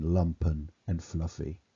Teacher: the assonance of the short vowel ah in lumpen and fluffy